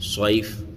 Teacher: یہاں یا لین ہے، نرم آواز کے ساتھ جلدی پڑھیں گے، صیف نہیں کھینچنا ہے، صیف۔